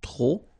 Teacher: don't pronounce the final P